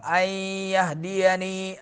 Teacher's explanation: نون ساکن کے بعد یرملون والا حرف آ رہا ہے، یا ہے، تو نون کو یا میں مدغم کریں گے، داخل کریں گے. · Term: ادغام